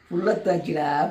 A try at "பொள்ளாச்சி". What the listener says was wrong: இது பேர் பொள்ளத்தாச்சி இல்ல, இது பேர் பொள்ளாச்சி. ஏப்பா இது பேர் பொள்ளாச்சிப்பா. POLL பொல் ACHI பொள்ளாச்சி.